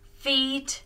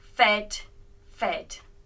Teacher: in the present form we used the long e sound e but in the past's forms we use a short e sound